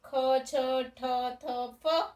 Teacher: એટલે કે આપણે વધારે પ્રાણવાયુની જરૂર પડે છે, એને મહાપ્રાણ કહેવાય.